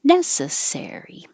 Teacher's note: primary stress NE is higher and longer and ser is just longer